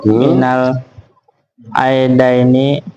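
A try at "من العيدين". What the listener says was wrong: Minal aidaini. Gak usah ait-ait kayak orang Malaysia lu. Kalau Malaysia Brunei ait. Kita mah ait.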